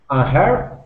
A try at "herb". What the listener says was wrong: Yeah, this word is herb, and so that H is going to be silent. So the word is herb.